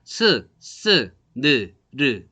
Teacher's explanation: 혀 끝이 잇몸 근처를 좁히던가 막던가 해서 나오는 소리다 해서 잇몸 소리라고 합니다